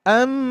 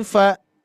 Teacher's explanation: Kalau yang atas amma lebih panjang, lebih lama, sedangkan yang ikhfa fa lebih sedikit